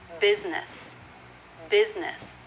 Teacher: Both syllables have the I vowel, even though one is spelled with the letter U and the other is spelled with the letter E.